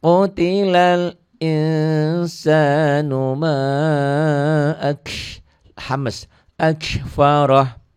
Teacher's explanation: Qutilal in jadi ing karena nun mati ketemu sin ikhfa